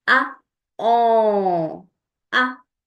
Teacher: A a I'm blocking the passage of the air through my mouth and it's coming in my nose. And you can feel a slight vibration in your nose as you do it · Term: French nasal sound